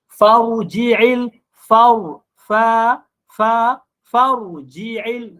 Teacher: Di fa tu kena nipis, ra tu tebal.